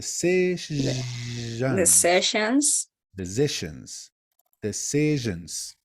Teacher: like an sh but with a little bit of vibration of her vocal cords like the sessions decisions decisions the sessions